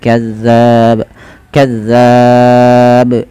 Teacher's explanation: Kemudian pantulkan pada lafal ba karena dia menjadi huruf ba yang sukun. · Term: qalqalah